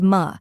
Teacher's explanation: a quick unstressed vowel sound like the a in sofa